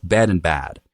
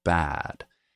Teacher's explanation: So if you think about your really stereotypical like surfer dude or valley girl kind of thing where you have a really open mouth, a bunch of vowel sounds are opening up. They're being pronounced with a lower tongue and jaw. So as in for me, dress is starting to sound like as in trap. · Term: California accent